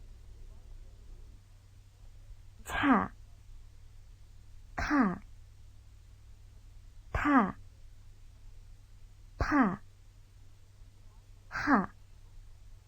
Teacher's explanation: The 5 characters on the left-hand side of the bottom row represent heavily aspirated sounds. Their pronunciation is accompanied by a puff of breath before the following vowel.